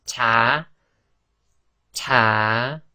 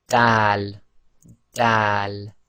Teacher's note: Group 7 is where the front of the tongue meets the gum, and it's slightly on the front upper teeth as well. So going over your gums and your front teeth.